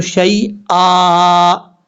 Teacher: سے بدل دیں گے، اور کیسے پڑھا جائے گا؟ شیئن ہے، وقف کریں گے تو شیئا، ایک الف کی مقدار اس کو لمبا کر کے پڑھا جائے گا